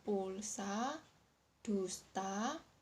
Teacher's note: Vokal U adalah vokal belakang tinggi bundar. Vokal ini diucapkan dengan meninggikan bagian belakang lidah dengan kedua bibir agak maju ke depan dan sedikit membundar.